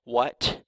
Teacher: you feel the air come out. You can hear that aspiration, it's called, at the end of the T. And that's different from what, where you leave your tongue held up against the roof of your mouth and you don't let the air out, what.